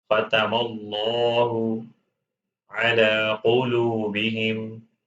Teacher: Strike this lam with two harakat and make it heavy.